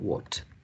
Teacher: In the word what, we have a plosive sound here at the end, right? What, which is basically a stop.